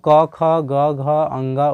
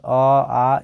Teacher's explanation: सभी का आवाज जो है डायरेक्ट कंठ से आता है